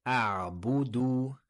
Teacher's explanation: Ressortez bien les lèvres pour la dhamma, le ou ici.